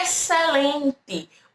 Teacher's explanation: O XC tem o som do S, tá bom? Então aqui, ó, é como se eu tivesse um S só.